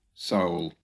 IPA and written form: sɔʊɫ (soul)